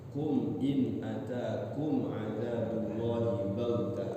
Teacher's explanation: Hati-hati mim sukunnya tidak ditahan ya, izhar syafawi. Kalau ketemu ba, ketemu mim baru ditahan.